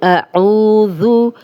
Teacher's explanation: अऊज़ु, औ वाव मद्दा है, जज़म वाली वाव, पीछे आइन पे पेश, 2 हरकत लंबा करेंगे। आइन की क्लियर आवाज़ आनी चाहिए, हमज़ा नहीं बनाना। ज़ू नरम हर्फ है, इस पे सीटी की आवाज़ नहीं आएगी।